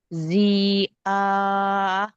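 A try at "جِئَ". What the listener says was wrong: ఆకు దీర్ఘం లేదు. జీ ఆ.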